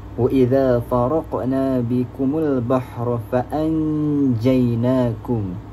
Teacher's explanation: Iaitu kita menyembunyikan sebutan nun sakinah di antara sebutan izhar dan idgham tanpa sabdu berserta dengun pada huruf yang pertama. Jadi cara bacaan dia kenalah dengun sekurang-kurangnya dua harakat. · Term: ikhfa hakiki